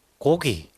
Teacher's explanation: 기역, 이 안울림 소리가 울림 소리 사이에 끼어 있다 보니까 이 안울림 소리가 어떻게 돼버려요? 울림 소리처럼 돼버려요. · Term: 유성파열음